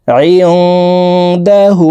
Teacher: এই নুন সাকিনকে নাকের ভিতরে লুকাইয়া গুন্নার সহিত পড়ব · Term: ইকফাহ গুন্নাহ